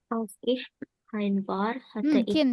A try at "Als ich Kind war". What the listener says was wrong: Kin, bukan kain. Kin war.